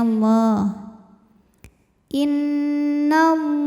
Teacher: lam pada laf Allah atau lam jalalah dibunyikan secara tafkhim sebab huruf sebelumnya berharakat fathah maka dibacanya tebal